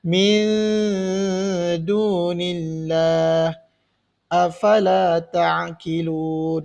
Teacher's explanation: Jadi bacaannya hendaklah dibaca dengung, nun mati bertemu dengan dal.